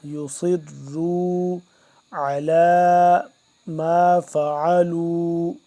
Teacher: یصروا کو صاد موٹا را بھی موٹا